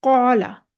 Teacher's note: हम देखते हैं कौला, अलिफ, काफ ज़बर अलिफ, ये अलिफ से पहले काफ है जो कि हरूफ मुस्तअलिया में से है, तो हम इस अलिफ को मोटा पढ़ेंगे।